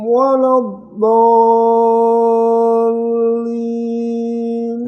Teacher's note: dhalin itu dia mad lazim musaqqal kalimi. Dia harus panjangnya 6 harokat.